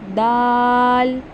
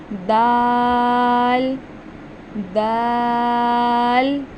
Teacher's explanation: जुबान की नोक और ऊपर के दांतों की जड़ से